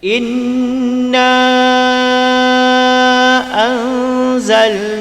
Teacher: Mad jaiz munfasil, huruf mad bertemu hamzah dalam dua perkataan. Jadi dua perkataan, panjang dia 4 ataupun 5.